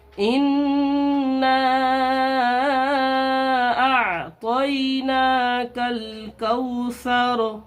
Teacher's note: یہاں دیکھیے نون کے اوپر تشدید ہے، اس لیے نون میں غنہ ہوگا، ناک میں آواز کو چھپا کر پڑھیں گے ان، اور یہاں دیکھیے الف کے اوپر مد ہے، اس لیے اس الف کو کھینچ کر کے پڑھیں گے